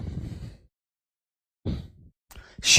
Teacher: श जो बोला जाता है यह हमारा तालु से बोला जाता है।